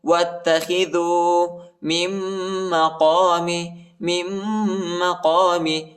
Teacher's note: تا پر شد آئی ہے، تا کو سختی کے ساتھ شدت کے ساتھ پڑھیں گے ، واتخذوا من مقام، میم کو دوسرے میم کے ساتھ ملائیں